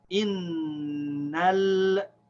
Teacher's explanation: this Hamza al-Wasl is not the first letter, so it's silent. So we start reading from here.